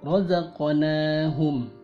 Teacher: Untuk huruf qaf dan huruf ta, pantulannya mendekati suara o, karena kedua huruf tersebut tersifati oleh isti'la. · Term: qalqalah sughra